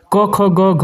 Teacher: तो KTM से हम कंठ कह सकते हैं यानी कि क वर्ग जो है वह कंठ उसका उच्चारण स्थान होता है